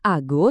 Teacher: Di kata ago suku kata pertamanya tuh enggak dikasih suplai tenaga. Makanya huruf A langsung meluruh jadi bunyi shua yang halus. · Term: schwa